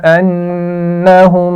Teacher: انہم نون پر بھی غنہ ہے اور میم پر بھی غنہ ہے